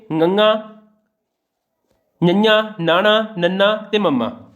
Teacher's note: ਅਨੁਨਾਸਿਕ ਵਿਅੰਜਨ ਉਹ ਧੁਨੀਆਂ ਹਨ ਜਿਨ੍ਹਾਂ ਦੇ ਉਚਾਰਨ ਸਮੇਂ ਕੁਝ ਆਵਾਜ਼ਾਂ ਨੱਕ ਵਿੱਚੋਂ ਨਿਕਲਦੀਆਂ ਨੇ। ਅਨੁਨਾਸਿਕੀ ਧੁਨੀਆਂ ਨੂੰ ਅੰਕਿਤ ਕਰਨ ਲਈ 5 ਅੱਖਰ ਨੇ ਸਾਡੇ ਕੋਲ।